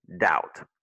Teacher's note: le B est muet, donc tu dis doubt. Parce que OU en anglais se prononce comme out, doubt.